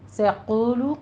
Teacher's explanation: سیقول قوف کو آپ نے پر پڑھنا ہے اور واو مدہ کو دونوں ہونٹوں کو گول کرتے ہوئے ادا کرنا ہے